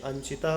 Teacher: ञ का उच्चारण स्थान क्या है, नासिका। और अनुस्वार का भी उच्चारण स्थान है नासिका, तो अत्यंत सवर्णी मिल गया।